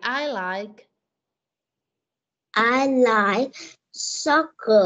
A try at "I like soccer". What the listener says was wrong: Cái từ like này phải thêm đuôi k vô.